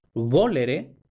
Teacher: con la fricativa bilabial, no la labiodental, sino la bilabial